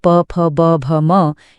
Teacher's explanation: पूरा प वर्ग, प, फ, ब, भ, म, इनको बोलने के लिए दोनों होंठों का मिलना जरूरी है। ये तो इतना आसान है कि कोई बोल रहा हो तो हम देखकर ही बता सकते हैं। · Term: ओष्ठय वर्ण, ओष्ठ्य वर्ण